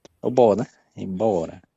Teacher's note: Embora a sílaba forte é bó. Aí há uma perda de aí ficou bora, mas permaneceu a sílaba forte.